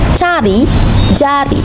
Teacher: Dilafalkan dengan kedua lidah ditempelkan pada langit-langit keras untuk menghambat udara dari paru-paru, kemudian dilepaskan. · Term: fonem hambat palatal